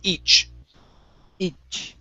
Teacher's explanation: Try that CH sound. It's a puff of air. It's a strong puff and stop the air.